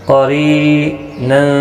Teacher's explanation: قاف حروف مستعلیہ ہے، پر پڑھا جائے گا، را زیر کی وجہ سے باریک پڑھا جائے گا۔ · را زیر کی وجہ سے باریک پڑھا جائے گا۔ ری یا مدہ بھی ہے، ایک الف کی مقدار کے برابر کھینچ کر پڑھیں گے اور یہاں پر تنوین کے بعد حروف اخفا کا فا ہے، اخفا حقیقی ہوگا، گناہ کے ساتھ پڑھیں گے۔